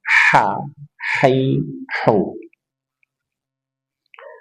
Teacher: Ha dari tengah tenggorokan.